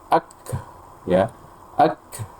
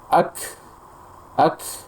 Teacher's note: banyak sekali hembusan nafasnya seakan-akan ee setelah kaf itu ada huruf ha